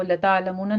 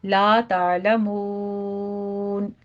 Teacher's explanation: لا میں الف مدہ ہے، 2 کاؤنٹ کریں گے ، مون میں مد عارض وقفی کریں گے، یہاں پہ 6